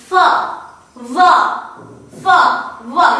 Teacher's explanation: As I have already said that as far as the place of articulation is concerned, it involves both f and v. It involves the lower lip and the upper teeth. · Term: labiodental consonant sound